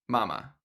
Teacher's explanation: they all share the same sounds: soft consonants, open vowels, the lips barely needing to move at all